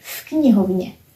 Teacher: For example, in the word v knihovně, this is pronounced as f, and now you can see why. Because k is voiceless, v is voiced, and now you know that k influenced v. So we pronounce it as v knihovně, as one word with f here, v knihovně, in the library.